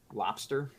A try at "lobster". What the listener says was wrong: But when you say it quick, it sounds like a P. I'm not saying exactly sounds like a P, but like if you were just like, yeah, I'm going to go to Red Lobster.